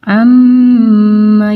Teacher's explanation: disini adalah guna-guna yang diatasnya ada tasydid ya lalu ditahan dulu harus ditahan dulu beberapa detik dengan dengung